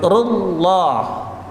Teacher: Jangan sampai ru, enggak ada wawunya tapi langsung lam.